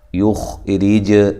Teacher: یخرج لنا، یخ خا کو موٹا، ہلانا نہیں ہے، را باریک ہے، جیم کو ہلانا ہے، جیم پہ قلقلہ کرنا ہے